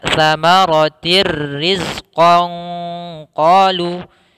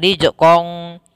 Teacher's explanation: Idgham bila gunnah, yaitu kita langsung masukkan tanwin, suara nunnya langsung masuk ke ra dan suara nunnya hilang